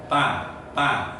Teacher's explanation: Kalau ta itu tidak mempunyai sifatul huruf jahar, nggak ada. Dia itu mempunyai sifatul huruf apa? Hames, nafas, angin dilepas